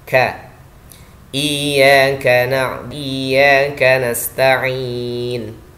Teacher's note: Bukan memantul tapi hams, ada udara yang keluar.